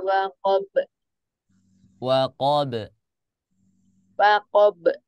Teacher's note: huruf ba itu makhrajnya ada di syafatain ya Jadi kalau dia qolqolah qolqolah maka dia tetap akan disyafatain